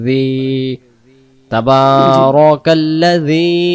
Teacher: জাল অক্ষর জিহ্বার আগা থেকে নরম করে পড়তে হয়, তাহলে এখানে জিহ্বার আগা থেকে জি, তাবারাকাল্লাযী।